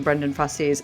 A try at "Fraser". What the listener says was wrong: no I in the name. Like razor.